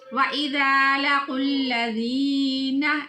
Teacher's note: یا ساکن ہے، پہلے حرف کے نیچے زیر ہے، اس یا کو ایک الف کے برابر لمبا کریں گے